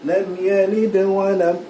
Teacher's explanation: Kalau dia bersambung dia jadi qalqalah sughra yang mana pantulannya tak berapa jelas.